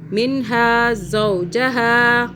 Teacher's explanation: یہ والا جو زا آ رہا ہے اس کو آپ نے سیٹی کی آواز میں ہی پڑھنا ہے